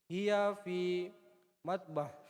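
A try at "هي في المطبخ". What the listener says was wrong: Fil. Jangan hilang lamnya. Fil. Ada fi. Fi huruf jar. Kapan masuk? Mengkasrah akhir satu kata.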